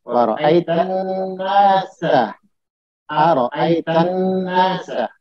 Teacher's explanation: Ketika alif lam syamsiyah, maka alif lamnya tidak dibaca tapi langsung ke huruf nun yang ditasdid.